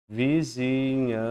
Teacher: Aqui eu tenho um dígrafo consonantal e aqui eu tenho um dígrafo vocálico. Esse N simplesmente nasaliza a minha vogal A. É a mesma coisa, é como se eu tivesse um A com tio.